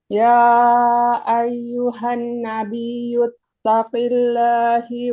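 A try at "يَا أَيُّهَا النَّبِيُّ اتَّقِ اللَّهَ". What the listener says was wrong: Laha, bukan lahila. Taqillaha.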